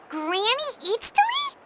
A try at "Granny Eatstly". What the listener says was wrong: But emphasis on Eatstly, not Granny.